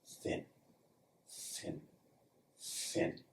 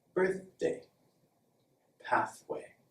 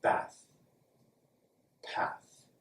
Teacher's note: If you hear lots of air with no s sound, then you're making a perfect voiceless TH.